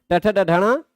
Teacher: मूर्धा हैं पांचों और स्पृष्ट हैं पांचों है ना स्पष्ट प्रयत्न वाले हैं।